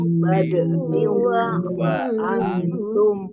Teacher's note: Kasroh tanwin bertemu dengan huruf wawu bacaan idgham bi gunnah masuk dengan mendengung yaitu mendengung wawu.